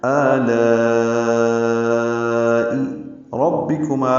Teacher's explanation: را کی زبر کی وجہ سے را کو پر پڑھ رہے ہیں